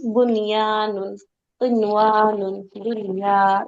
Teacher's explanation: একই শব্দে ওয়াও বা ইয়া থাকলে নুন সাকিনকে গুণনা ছাড়াই পড়তে হবে, জাস্ট নর্মালি